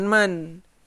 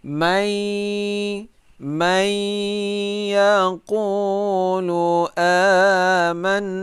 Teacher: Nah, mai, ya, secara berdengung dengan cara memasukkan bunyi nun ini ke dalam ya